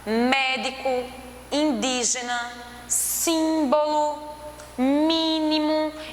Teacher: percebe que na pronúncia a antepenúltima dessas palavrinhas é a que tem a tonicidade maior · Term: proparoxítonas